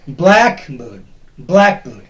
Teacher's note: This is a compound word, two parts. One is black, the other is bird. The first part will be stressed.